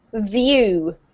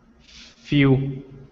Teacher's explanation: The difference between the V and the F is that the F doesn't have any vocalized sound coming out